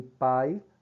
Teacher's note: Sai abertamente, né? Livremente pela boca, não precisa das narinas. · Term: oral